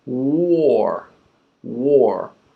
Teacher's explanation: It flows right in from war. Okay, the W is called a glide because it's really smooth. It slides right into the next sound.